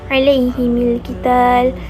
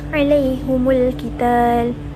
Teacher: Imam Hamzah dan Al-Kisai membaca dengan baris dhammah pada huruf ha dan huruf mim ketika wasal